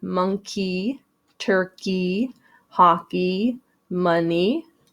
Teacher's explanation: this e y can sometimes make that long e sound